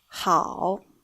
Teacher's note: contains an initial, h, and a compound final, ao, and a third tone as well. So it is read 好.